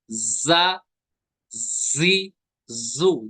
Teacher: जा को सीटी के साथ अदा करते हैं